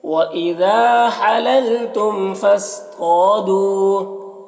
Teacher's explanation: طا کو بھی پر پڑھیں گے، حروف مستعلیہ میں سے ہے، طا میں الف مدہ ہے اور دو میں یہاں پر واو مدہ ہے، دونوں کو ایک الف کے برابر کھینچیں گے، جیسے وَإِذَا حَلَلْتُمْ فَاصْطَادُوا۔ · فاصطادوا صاد کو پر پڑھیں گے، حروف مستعلیہ میں سے ہے اور یہ ساکن حرف ہے تو پیچھے والے متحرک حرف فا سے مل کر پڑھا جائے گا، الف کو نہیں پڑھیں گے۔